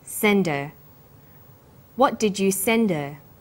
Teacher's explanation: send her send is the strong form and her is weak because her is not stressed we drop the initial hurt sound